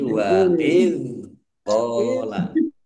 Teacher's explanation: dzal sukun bukan kolkolah, jangan dipantulkan.